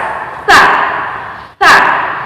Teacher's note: ujung lidah dipertemukan dengan gigi seri bagian atas